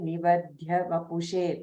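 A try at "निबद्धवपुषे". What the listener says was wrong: Nibaddha, double da, Nibaddha Vapushe. No, ba. First ba, Nibaddha.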